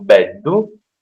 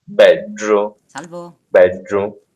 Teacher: Alcuni dialetti però hanno una pronuncia come se dopo questo D ci fosse una R, tipo, quindi non hanno beddu, hanno beggiu.